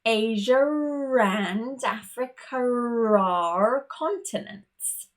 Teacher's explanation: what I've actually done is inserted an extra R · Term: intruding r